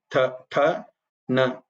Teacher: Tha is a dental, so your tongue tip touches the back of your upper teeth.